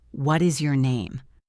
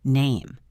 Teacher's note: We use falling intonation for statements and information questions. If I ask you, what is your name? My voice goes down at the end. Name. It sounds finished, but if I ask a yes or no question, my voice goes up.